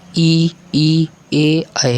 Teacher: यानी जीभ के अगले हिस्से से जो बोले जाते हैं अग्र स्वर कहलाते हैं।